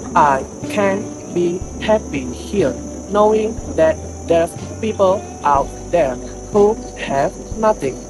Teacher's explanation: For intonation, RP builds steadily toward a calm moral tone, then drops gently after nothing. The original accent rises emotionally on happy here and falls deeply on nothing, expressing stronger personal conflict.